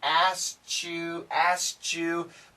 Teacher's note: if we say it really fast it sounds like a che